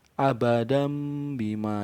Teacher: Jadi nun sukun atau tanwinnya seolah tertutupi oleh suara mim, seperti itu untuk iklab. · Jadi hurufnya ada satu saja, ba. Untuk cara membacanya sendiri dengan menyuarakan huruf nun atau tanwin menjadi huruf mim. Nah, dengan mendapatkan dua bibir serta mendengung.